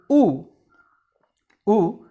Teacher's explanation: the position is between close and half close it is the back part of the tongue that is used and there is lip rounding so ooh can be described as a rounded back between close